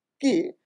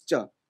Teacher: forward it becomes cha because if you see here right like C is produced from the back of the mouth and Cha is produced from the front of the mouth the tongue instead of touching little back if little shifts to